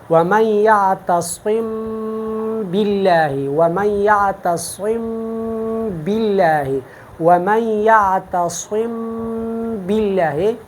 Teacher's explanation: میم ادا کرنا ہے، پھر 1 سیکنڈ کے لیے غنی کے لیے ناک میں آواز لے کے جانا ہے اور پھر با کو ادا کرنا ہے تری سے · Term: اخفا